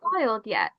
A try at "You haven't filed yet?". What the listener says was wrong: Um, you haven't filed yet? It goes up higher for the last two words.